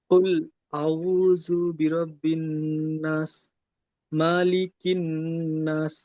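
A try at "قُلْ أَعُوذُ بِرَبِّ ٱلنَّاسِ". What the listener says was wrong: এখানে নাস বলে টান হবে, মাদ্দে আরজি ওয়াকফি হওয়ার কারণে।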